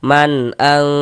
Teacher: Maka nun sukun bertemu dengan huruf hamzah hukumnya izhar halqi. Maka dibaca jelas bunyi nun sukunnya. Kemudian tidak didengungkan, maka dibaca pendek saja karena dia tidak didengungkan.